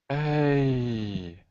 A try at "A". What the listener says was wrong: Ah, not A. Be careful with that E sound. The E sound is not really pronounced by native speakers. It's A. You can have AY, like say. You can have A plus a consonant plus E. So you get make or safe. So you have A plus a consonant plus E.